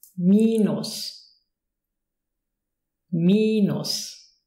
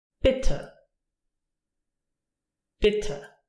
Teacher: Here again we have a long version and a short version. The short version is more open. Long version, minus, minus.